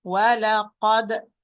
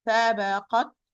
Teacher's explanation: And we said the only difference that the ta is harfun mahmuz, voices, and the dal is harfun majhur. Dal have qalqala. After we open the articulation point, ta has hams